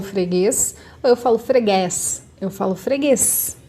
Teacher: é com é mais para dentro Então significa que não vai ser o acento agudo vai ser o acento circunflexo